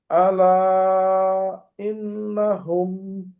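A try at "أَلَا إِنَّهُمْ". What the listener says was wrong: হ্যাঁ, এই তো মাশাআল্লাহ।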